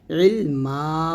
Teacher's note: মধ্যে এওয়াজ হচ্ছে দুই জবরের পরে ওয়াকফ করিলে মধ্যে এওয়াজ হয় এক আলিফটা নিয়ে পড়তে হয়